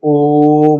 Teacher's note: इसके उच्चारण में जो समय लगता है वो लगता है 3 गुना, यानी कि 1 गुना इस पर, 2 गुना इस पर, 3 गुना इस पर, यानी 1 मात्रिकाल इसको, 2 मात्रिकाल इसको, 3 मात्रिकाल इसको, तो ये जो है प्लुत स्वर उसे कहते हैं।